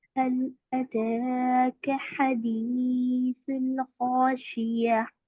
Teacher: हमजा पर जबर की हरकतें जल्दी पढ़ेंगे। ता पर खड़ा जबर है, एक अलिफ की मिकदार खींचेंगे। काफ पर जबर की हरकतें जल्दी पढ़ेंगे।